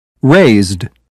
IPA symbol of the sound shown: d